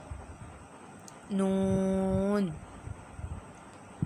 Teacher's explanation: یہ زبان کا کنارہ اور انیاب سے ثنایا تک کے دانتوں کی جڑوں سے ادا ہوتا ہے۔